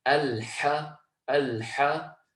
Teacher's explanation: Secondly, we've got the letter ha. The letter ha, as we know, comes from the middle of the throat. It also has the characteristic of al-hams, the release of the breath. So we're going to actualize and be aware of that characteristic and strengthen it as much as possible and say al-ha, al-ha.